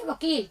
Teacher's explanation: वकार से दंतोष्ठम, वह जो है दंत और ओष्ठ से बोला जाता है